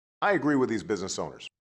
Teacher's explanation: has an H star pitch accent followed by a downstep H star and an LL boundary tone